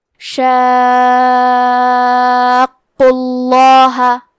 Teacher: قاف کی ادائیگی زبان کے جڑ اور تالو کے نرم حصے سے ہے اور قاف حروف تفخیم میں سے ہے، تو ہم یہ حرف کو موٹی آواز میں پڑھیں گے۔ · کیونکہ اس پہ تشدید پیش کا ہے تو لفظ الجلالہ کے لام کا حکم ہے تفخیم، تو ہم حرف اللام کو موٹی آواز میں پڑھیں گے